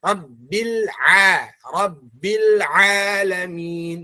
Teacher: Dan ain, ingat, huruf ain keluar dari al-jawf, bukan dari hidung